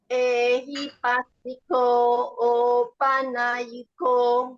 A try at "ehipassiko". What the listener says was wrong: Pasiko. You must emphasize. Emphasize the double S. Ehipasiko